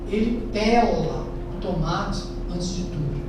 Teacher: A preposição pela é pronunciada com a primeira vogal fechada, pela, enquanto a forma verbal pela é pronunciada com a primeira vogal aberta